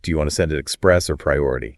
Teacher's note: Rising intonation on or it signals to the customer that they have a choice to make